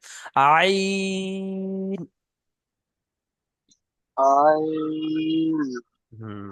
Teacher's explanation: না, আইনের টান হয়নি, তো আইন থেকে তিন আলিফ পরিমাণ টান দিতে হবে।